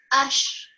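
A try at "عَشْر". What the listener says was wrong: Just have the ra come through a little bit more. Ashr.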